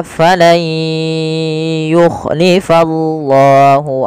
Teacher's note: Idam artinya memasukkan maka cara membacanya bukani jadi Fal yuklifa diganti suara nunnya menjadi suara ya kemudian Langkah kedua ditahan dengan gunah